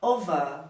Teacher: No britânico, o R no final de palavras, ele dá uma sumida